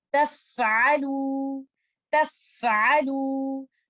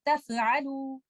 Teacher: In this example, remember to give letter fa timing of rakhawa, running of the breath of hums, and do not do qalqala.